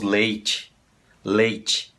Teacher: Leite, nós falamos também, essa E aqui soa uma I.